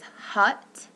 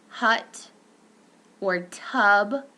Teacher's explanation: The central vowel, this is referred to as a caret, and it occurs in stressed syllables only. It's a central, mid, tense, neutral lip rounding, okay?